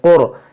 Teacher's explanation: اس را ساکن سے پہلے پیش ہے، اس را کو موٹا پڑھیں گے